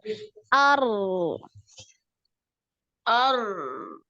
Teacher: makhrajnya itu di di ujung ya di awal punggung ujung lidah pada posisi digusi gigi seri atas ya berarti di depan lidahnya jangan ke belakang jangan Nti tarik